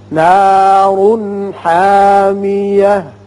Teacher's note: را پر ہوگا اوپر پیش ہے لیکن اس کے ساتھ ساتھ یہ اظہار ہوگا نون کا چونکہ ہا آ گیا جو حروف حلقیہ میں سے ہے